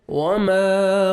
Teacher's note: الف مد ہے، میم کو 1 سیکنڈ کھینچنا ہے